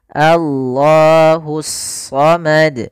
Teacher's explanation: alif lam yang ditulis tapi tidak dibaca lamnya langsung ke huruf Shad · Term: alif lam syamsiah